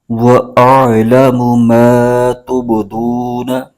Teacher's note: دال پر پیش ہے اور واو ساکن، یہاں پر واو مدہ ہو رہا ہے، اس کو ایک الف کھینچ کے پڑھیں گے۔